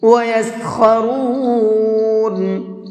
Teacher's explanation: خا کو منہ بھر کے پڑھیں گے